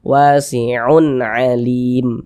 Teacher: dibaca jelas dan tidak berdengung maka ini dibaca jelas tanwinnya bunyi tanwinnya dibaca jelas kemudian pendek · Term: izhar halqi